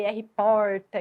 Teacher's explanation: que é um r retroflexo